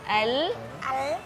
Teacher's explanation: Nah, alnya jangan lancip, alnya yang lebar.